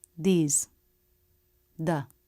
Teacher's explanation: notice how it's just the very tip that comes out of the teeth the tongue is relaxed the teeth surround it but they're not clamping down on it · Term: voiced th